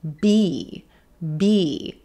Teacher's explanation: We start with the b, b, b consonant with the lips coming together